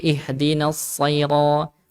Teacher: Nah, huruf so ketika kasrah jadi tetap tebal.